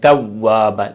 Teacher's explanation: واو کے اوپر جو ہونٹ ہیں گول کریں، تھوڑے سے آگے نکالیں